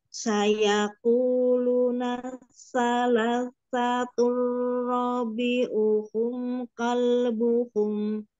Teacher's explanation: Sofir aja, sa. Ujung lidah bertemu gigi di bawah.